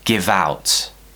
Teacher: So what we're doing is we're using the consonant at the end of give, once again to link to the O at the beginning of the next word.